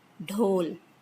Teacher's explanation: Then d, it is stop, voiced, aspirated, dhol, drum.